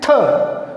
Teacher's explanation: थ का हमने उच्चारण किया तो हमें अधिक वायु या श्वास की आवश्यकता हुई, इसलिए थ वर्ण है वो महाप्राण है